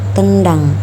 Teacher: huruf N dan huruf d di sini letaknya sama berada pada alveolar jadi lebih nyambung dalam pembuatan katanya dan contoh yang ketiga yaitu